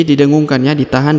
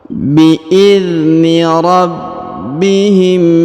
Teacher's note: ditahan dan didengungkan dua harakat